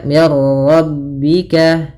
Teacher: biduni gunah Idam tanpa disertai dengan gunah berarti hanya idamnya saja Idam itu memasukkan maka masukkan Nun ke ro sehingga suara nunnya hilang